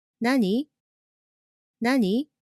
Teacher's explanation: when you're speaking of course you have to use the rising tone at the end and go up